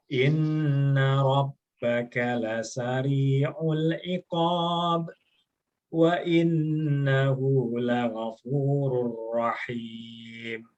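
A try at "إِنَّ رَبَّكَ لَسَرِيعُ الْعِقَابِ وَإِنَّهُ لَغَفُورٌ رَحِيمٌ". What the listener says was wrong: Ahsanta.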